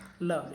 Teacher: ल को जब आप बोलेंगे तो जुबान के दोनों तरफ पार्श्व से इसकी हवा निकल जाती है। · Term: पार्श्विक